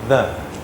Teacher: you have to put your tongue between your teeth and make this sound like that and it's got a voice down there so if you hold your hand here you can feel the